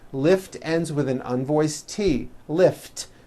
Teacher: if a word ends in a t or a D sound we add the ending ID which is a vowel I followed by a d which is voiced